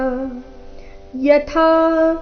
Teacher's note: ಇಲ್ಲಿ ಥ ಮಹಾಪ್ರಾಣ ದೀರ್ಘ ಥ ಮೇಲೆ ಪ ದು ಆಘಾತ ಕೂಡ ಬರಬೇಕು ಯಥಾ ಪ್ರಕಾಶ ಯತ್ಯೇಕ ಯತ್ಯೇಕ